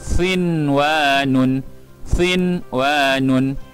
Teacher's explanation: Nun bertanda sukun dibaca dengan jelas, tidak perlu didengungkan kerana ini dalam satu kalimah, tidak berlaku dengung dan tidak dinamakan sebagai idgham ma'al ghunnah kerana idgham ma'al ghunnah diwajibkan atau disyaratkan berlaku dalam dua perkataan, bukan satu perkataan.